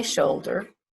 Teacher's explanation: shoulder is two syllables and we stress the first syllable